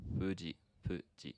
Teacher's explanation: this is a sound that's made with your two lips as opposed to like your teeth and lip